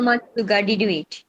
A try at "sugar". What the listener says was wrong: হ্যাঁ, সুগার, এখন আবার সুগার আসছে। হাউ মাচ সুগার না, এটা হচ্ছে সুগার, তালব্য স দিয়ে বলতে হবে। হ্যাঁ, সুগার।